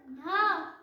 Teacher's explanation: ढ ऊपर तालू में जा रही है और झटके से नीचे जा रही है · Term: नुक्ता व्यंजन